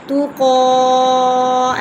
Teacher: قاف کے اوپر کھڑی زبر ہے، اسے ہم ایکل کے برابر کھینچیں گے ، تو قا ایسے موٹا بھی پڑھیں گے کیونکہ یہ موٹا